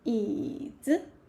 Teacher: 子 is a neutral tone, light and short.